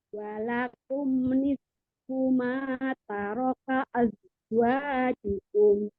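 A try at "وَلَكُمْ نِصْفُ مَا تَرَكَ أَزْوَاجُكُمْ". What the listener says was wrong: Nisfu sama shotnya nggak kedengeran nih. Nisfu ada rokohnya. Ini zainya nggak sama sekali nggak ada sofirnya. Az.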